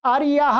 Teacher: स्वामी के अर्थ में वर्तमान जो आर्य शब्द है उसका अंतुदात्त होता है, जैसे आर्यः अर्थात स्वामी, तो अंतुदात्त हो गया।